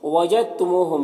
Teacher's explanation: دال ساکن کے بعد تا مشدد حرف ہے، تو یہ دال اس تا کے ساتھ مدغم ہو جائے گا، اس کو ادغام متجانسین کہتے ہیں، بغیر غنہ کے اسے پڑھتے ہیں۔